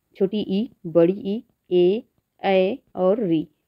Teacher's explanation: जिन स्वरों का उच्चारण जीभ के आगे वाली भाग से होता है, ठीक है, वे अग्र स्वर कहलाते हैं, मतलब नोक वाला भाग, ठीक है।